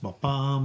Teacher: So they're iambic, so they go ba-bam. So the second syllable is stressed, ba-bam. The fourth syllable, ba-bam.